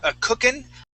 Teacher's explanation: i do not pronounce the g at the end and it's more of an in sound